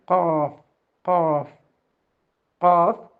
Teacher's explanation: okay അടുത്ത അക്ഷരം കാഫ് കാഫ് കാഫ് ഭാരമുള്ള അക്ഷരമാണ് ഹെവി ലെറ്റർ ആണ് നാവിന്റെ അങ്ങേയറ്റം മേലെ മേലെയുള്ള മാംസമുള്ള അണ്ണാക്കിൽ